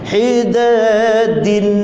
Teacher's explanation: Huruf dal, hujung lidah sentuh pangkal gigi atas.